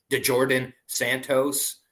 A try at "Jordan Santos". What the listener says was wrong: don't pronounce the D. You know the D is silent. And you're doing that on purpose.